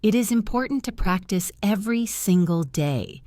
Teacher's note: Did you hear how I emphasize the word important and the word every?